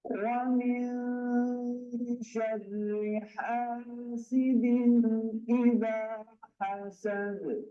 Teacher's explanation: سین کے اوپر آپ کی سیٹی ہونی چاہیے